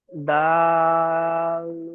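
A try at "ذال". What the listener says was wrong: দাল নয়, এটি জাল। জাল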